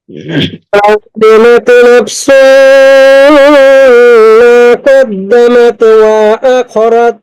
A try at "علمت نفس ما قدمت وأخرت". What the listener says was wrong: আয়াত একটু টান হয়ে যাচ্ছে মনে হয়। আলিমাত হরকতের উচ্চারণ তাড়াতাড়ি হবে। তাড়াতাড়ি পড়লে কোথায় গুণনা বা নিয়ম সেটা বুঝে সারতে পারতেছেন না।